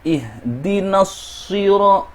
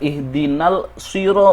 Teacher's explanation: Ada huruf 'al' di sini yang bertemu dengan huruf 'shad', yang dibaca sebagai al-shamsiyah . Al-shamsiyah di sini menggabungkan huruf lam yang tidak diucapkan ke dalam huruf shad, yang dibaca sebagai ihdinasiro. · Al-shamsiyah di sini menggabungkan huruf lam yang tidak diucapkan ke dalam huruf shad, yang dibaca sebagai ihdinasiro. Setelah na, langsung menuju shad. Itu tidak dibaca sebagai ihdinal siro, itu tidak benar.